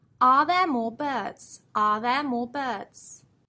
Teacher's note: Although we have an R in each of those words, we do not pronounce them.